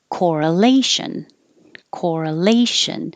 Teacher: it looks like here and the stressed syllable is or here and it's four syllables with stress on the third syllable